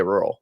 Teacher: it doesn't really have that second R